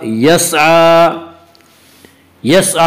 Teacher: खड़ा ज़बर को 1 अलिफ के बराबर खींच कर पढ़ेंगे।